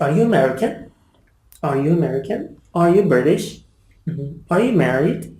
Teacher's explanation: the question is a yes/no question we our intonation our voice rises at the end